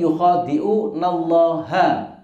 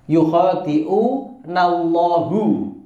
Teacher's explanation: perhatikan di situ Allah menggunakan fathah ha, bukan Allahu